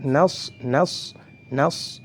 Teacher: sifatnya adalah hams, nafasnya dialirkan, nafasnya keluar, nas. Kemudian yang kedua sifatnya adalah rakhawah.